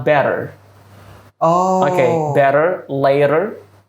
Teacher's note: Itu di tengah-tengah dua huruf vokal, bunyi vokal maksud saya. Jadi bunyinya berubah jadi soft D.